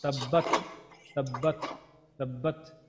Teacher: তাটা উচ্চারণ করার পর আমরা সাকিন দিয়ে উচ্চারণ করার পর একটু বাতাসটা চালু থাকে, হালকা কিছুক্ষণের জন্য বাতাসটা চালু থাকে।